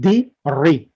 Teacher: a kasra is the sound of e, like di, ri